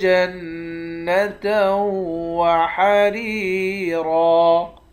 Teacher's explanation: نون مشدد پر غنہ کریں گے، تا کو واو کے ساتھ ملا کر یہاں بھی ادغام مع الغنہ کریں گے، یعنی غنہ کے ساتھ پڑھیں گے۔ را کو یا کے ساتھ ملا کر ایک الف کی مقدار کھینچ کر پڑھیں گے۔